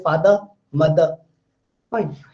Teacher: So last R sound is generally dropped in English language